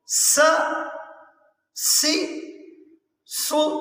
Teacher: جب ہم سین پڑھتے ہیں تو اس میں سیٹی کی آواز آتی ہے۔ سین زبر سا، سین زیر سی، سین پیش سو، سا سی سو۔